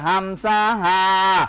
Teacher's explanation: হামসা এক নম্বর মাখরাজ হলকের শুরু হইতে হামসা